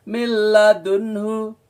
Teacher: Nun mati ketemu dengan lam atau ro, itu lebur tapi tanpa dengung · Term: idgham bila gunnah